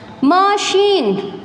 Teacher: Ma, schwa sound, ma. Sheen, sh, machine.